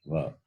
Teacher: Without the usage of the teeth, va is not complete. It is labial, but dental also. Dental plus labial.